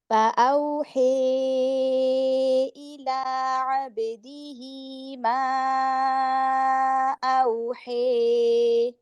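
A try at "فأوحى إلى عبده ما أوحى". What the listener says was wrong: زیادہ لمبا ہو گیا. اوحی. بس 2 حرکت.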